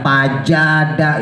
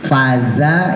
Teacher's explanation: Ya, makrotnya zai sama sin antara gusi sama gigi.